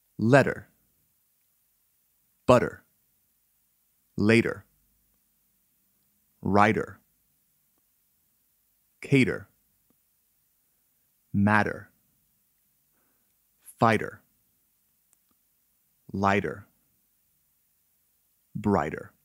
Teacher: when a t occurs between two vowel sounds it is pronounced as a soft d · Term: t to d rule, T to D rule